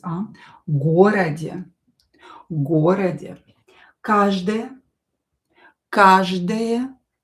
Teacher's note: O not stressed is pronounced as a.